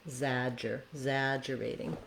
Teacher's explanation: Exaggerating, main stress is on zag, exaggerating, second syllable.